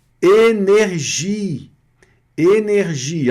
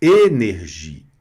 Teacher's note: O acento agudo vocês já sabem, já viram isso nas aulas das vogais a não é as vogais orais que o e com acento agudo tem um som fechado